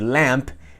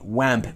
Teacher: En lugar de decir lamp, they would say wamp, porque ven e imitan lo que ven. Ellos ven que se hace esto y lo imitan, omiten lo que ocurre adentro porque no lo pueden ver y terminan no pronunciando lamp, sino wamp.